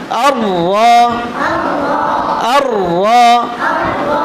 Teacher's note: এমন না, এটা তাকরার করা, উপরে একবার প্রকম্পিত হওয়া, তাকরার প্রকম্পিত হওয়া, উপরে জিহ্বার আগাটা উপরে তালুর সাথে একবার বাড়ি খাওয়া